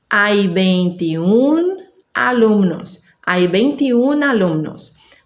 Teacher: Perdeu o final e agora a última sílaba é mais forte e termina em N, S ou vogal.